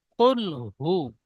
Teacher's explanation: কুল হু বলে হাই একটু টান হয়ে যাচ্ছে, হাই টান হবে না।